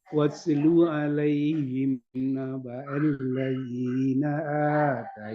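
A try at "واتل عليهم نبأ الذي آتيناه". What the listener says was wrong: Enggak pakai na. Enggak ada nanya.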